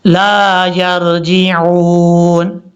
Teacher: جیم کے بعد جو عین ہے اس کو کلیئر کرنا ہے، حمزہ کی آواز نہیں آنی چاہیے